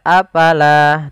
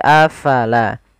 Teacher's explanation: Fa harus alirkan nafasnya